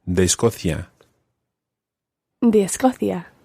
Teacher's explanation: it's still written as two words, de Escocia, but it does run together when you're pronouncing it